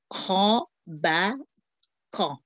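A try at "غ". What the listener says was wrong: it's not qa it's ga ga No, gain, gain, gain. F and gain, different word. Gain, ga. Ga, ba, ga. Ga, ba, ga.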